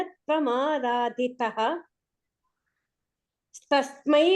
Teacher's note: రాధిత అక్కడ విసర్గ పడేసి నెక్స్ట్ తస్మై తీసుకోవాలి